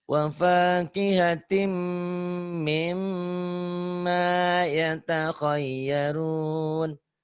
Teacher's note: huruf-huruf spesial nun dan mim itu ditahan, nyamber, ditahan, double, dengung ke hidung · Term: idgham bigunnah